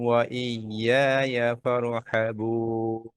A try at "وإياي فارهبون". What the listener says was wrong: র আর একটু মোটা করেন ওয়া ইয়ায়া ফারহাবুন